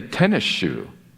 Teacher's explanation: The sa turns to sha because it's followed by a sha. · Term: Euphonic combination